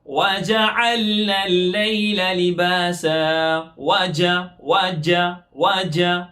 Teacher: ہماری زبان کا سینٹر والا حصہ اوپر کے تالو کی طرف لگ رہا ہے، جس سے جیم ادا ہو رہا ہے